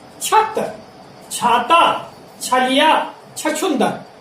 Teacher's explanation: इन शब्दों के उच्चारण में जिह्वा का अग्रभाग सीधे सीधे तालु को स्पर्श करता है